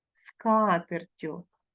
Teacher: подовження не відбувається бо тут дві приголосних і закінчення ю